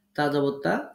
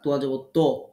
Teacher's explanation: তা পড়ার সময় তোয়া এর মতো পোর পড়বেন না, বরং তাটা বারিক হবে, তোয়াটা পোর হবে